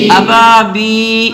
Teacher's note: با کے ساتھ یا آ رہی ہے اور یا سے پہلے زیر ہے, تو با کو بھی ایک الف کھینچ کے پڑھیں گے